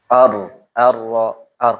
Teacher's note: Punggung ujung lidah menempel pada gusi ya. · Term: dhahru tarafil lisan